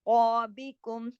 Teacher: کاف موٹا کریے گا اور باقی تمام حروف باریک پڑھے جائیں گے ، کم پہ ہم رکے، اظہار کیا ہم نے، میم ساکن